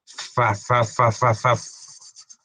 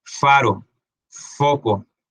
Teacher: labio dental el sonido de la f